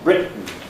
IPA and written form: ˈrɪʔn̩ (written)